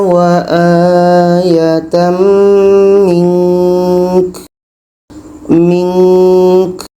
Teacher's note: Contoh wa akhirina wa aatam mink mink nun dibaca ka pun dibaca kebetulan di sini nun mati nun mati bertemuka hukumnya ikhfa ikhfa hakiki ada dengung jadi kita dengungkan dulu baru matikan ka k ka ini sifatnya Hamas berangin.